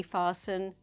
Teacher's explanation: fasten with a t say fasten without a t